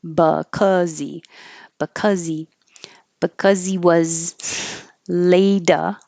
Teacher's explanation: So because this is another instance where we can get rid of the H and connect the final consonant of the previous word over. And because ends with a Z, that's what you will hear connecting.